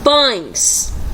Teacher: Vemos a letra E, mas a pronúncia sai com o som de I e a entonação fica mais fraca. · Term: mudança fonética